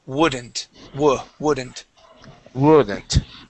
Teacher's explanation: is woodn't woodn't Wen w woodn't w woodn't okay the L the L is going to be silent here we do not pronounce that L